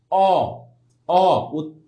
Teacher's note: নিম্নমধ্য পশ্চাৎ এবং অর্ধ বিবৃত